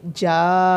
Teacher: اسی طرح آگے آدھاکا روئینی، روئینی موٹا برے، آگے جانن، نون مشدد کا گنہ بھی ہوگا، جب مد لمبا ہونے کے بعد نون کے ساتھ ملے گی پھر اس کے اندر گنہ بھی ہوگا